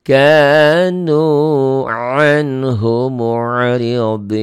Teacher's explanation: Na jadi pendek, tapi dihentikan jadi panjang.